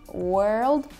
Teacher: В этом слове опять слышно американцев, которые выговаривают R, которые говорят world, а в других акцентах такого нету, и вот это вот гласный O, он отличается у каждого.